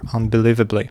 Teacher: we have a secondary stress at the beginning of the word here. · Unbelievably, so it's the third syllable is stressed, unbelievably, and we have a secondary stress at the beginning of the word